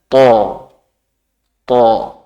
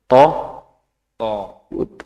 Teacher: th nah ta biasa Kemudian vokalnya diganti o th kemudian pangkalah pangkal lidah diangkat th jadi lebih berat